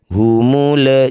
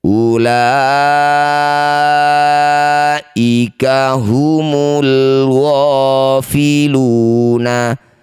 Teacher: Perhatikan di sini ada alif diikuti lam sukun disebut bacaan namanya izhar qamariah. Lam sukun baca dengan jelas tidak usah tawalud ya atau diseret-seret bunyinya